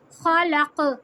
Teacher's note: खा ज़बर खा, लाम ज़बर ला, काफ ज़बर क़ा, ख़ालक़ा। जब वक्फ करेंगे खा भी हैवी, काफ भी हैवी, ख़ालक़। काफ पे कलकला करेंगे, काफ पलट कर आएगा जैसे हमने दाल को किया।